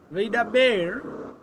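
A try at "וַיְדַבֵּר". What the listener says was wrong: So make two open syllables to begin your pronunciation. Va-ye. Together, all vayidaber.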